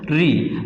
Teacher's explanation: जब हम री का उच्चारण करते हैं तो हमारी जीभ जिस कठोर हिस्से पर छू जाती है उसे हम मूर्धा बोलते हैं, और इससे जो उच्चारित स्वर होगा उस स्वर का नाम क्या होगा, वो मूर्धन्य स्वर होगा।